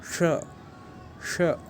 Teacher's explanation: मूर्धा से जब स्पर्श करते हैं तब ये श निकलता है